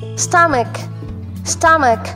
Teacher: Puro siya schwa sound. Yung first at second syllable, stomach.